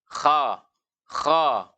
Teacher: Itu tidak seperti itu cara membaca huruf kho. Huruf kho dia ketika dibaca pangkal lidah kita terangkat tapi mulut terbuka. Kha, kha. Jadi kha, khalidina. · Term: infitah